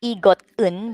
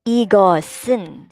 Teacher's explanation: the siot, the S sound that we have here, will go up with the 은